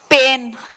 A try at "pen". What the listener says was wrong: पेन बोलेंगे तो फिर वो पेन हो जाएगा, दर्द वाला पेन, PAIN, है ना? तो पेन और पेन में प्रोनाउंसिएशन में फर्क है, स्पेलिंग में भी फर्क है। पेन है PEN और पेन है PAIN।